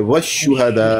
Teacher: शीन की अदायगी के वक्त आवाज़ को फैलाएंगे